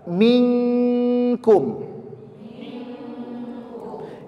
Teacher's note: enggak renggang langsung nempel maka bunyinya adalah Eng setiap nun sukun ketemu Kaf